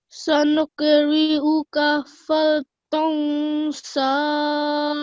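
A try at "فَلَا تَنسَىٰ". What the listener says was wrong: Okay, I suggest first of all you stop on this one, dansa, but you forgot the lam here. So if you can read that again, you didn't say, you need to say fala dansa.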